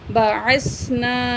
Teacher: عین کو سا سے ملائیں گے، نون کے اوپر کھڑی زبر 1 الف کے برابر کھینچ کے پڑھیں گے، اور پھر ہا کے اوپر پیش ہے تو میم سے ملائیں گے، ٹھیک ہے.